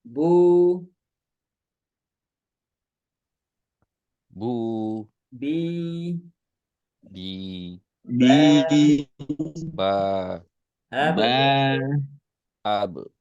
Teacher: ketika qalqalah huruf ba maka tipis saja.